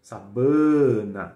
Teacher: em espanhol não tem esse som nasalizado na segunda sílaba